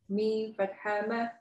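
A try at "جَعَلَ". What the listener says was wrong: That's not a meme. Ja'ala. So if you can see here, that's why they put these two words on purpose next to each other, because they know people are going to mix up these two.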